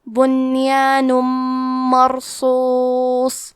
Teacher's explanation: ہم تنوین کو میم میں ملا کے غنہ اور تشدید کے ساتھ یہ حکم کو ادا کریں گے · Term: ادغام